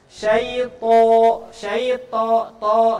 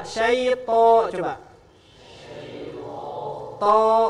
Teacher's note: Vokal A jadi vokal O. Ya. Vokal A jadi vokal O. Nah, ini gemuk. O itu gemuk. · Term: tebal